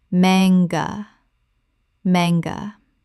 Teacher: Correct pronunciation, manga. 2 syllables with the stress on the first. The A is short, not long.